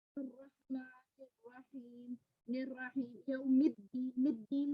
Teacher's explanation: यानी इसमें जो है हमजा को हम हज़फ कर देते हैं, ठीक है, मिला के पढ़ देते हैं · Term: हमजा वसल